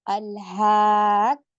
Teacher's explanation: ٹھیک ہے، تو ہم پہلے اس کو ساکن کا کریں گے اور پھر یہ حرکت والا، تو دو کاف کو ایسے ادا کریں گے ہم، الحاقۃ ایسے پڑھیں گے. تو قاف کو تھوڑا لاؤڈ بھی کرنا ہے کیونکہ نبر کرنا ہے، اور دو بار ہم نے پڑھنا ہے کیونکہ مشدد ہے